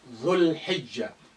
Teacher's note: Look how this lengthening dhu now been shortened.